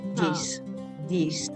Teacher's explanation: the voiced this will often be pronounced like D, like a letter D